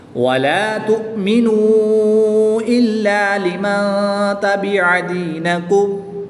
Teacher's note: نون ساکن کے بعد تا حروف اخفا میں سے ہے تو یہاں پر اخفا کریں گے، یعنی غنہ غمانی کر کے پڑھیں گے۔